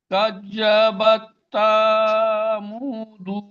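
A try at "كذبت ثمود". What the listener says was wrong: সা টান হয়ে যাচ্ছে কাযাবাত এটি টান হয়ে গেল সাটা টান হয়ে গেল কাযাবাত সামুদ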